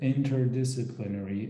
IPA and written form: ˌɪn.t̬ɚˈdɪs.ə.plɪ.ner.i (interdisciplinary)